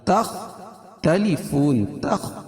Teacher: خا کو پور پڑھیں گے. کیوں؟ خا حروف مستعلیہ میں سے، اور فون میں وقف کی صورت میں مد عارض وقفی ہوگا، اس میں طول توسط قصر تینوں جائز ہے. · فون میں وقف کی صورت میں مد عارض وقفی ہوگا، اس میں طول توسط قصر تینوں جائز ہے. قاعدہ وہی کہ حروف مدہ کے بعد سکون عارضی ہو تو اس کو مد عارض وقفی کہیں گے.